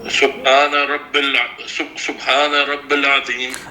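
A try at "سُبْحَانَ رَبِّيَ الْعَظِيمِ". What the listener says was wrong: کیوں ہے نا، ربی پھر یہ یا پر زبر ہے اور آگے عظیم ہے. ٹھیک ہے، تو یہ یا کی زبر لام سے ملتی ہے.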